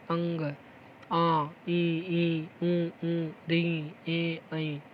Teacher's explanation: नाक और मुख दोनों का इस्तेमाल किया जाता है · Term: अनुनासिक